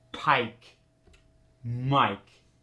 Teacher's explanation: when the long eye is followed by a voiceless consonant like Pike it doesn't change at all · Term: hard long eye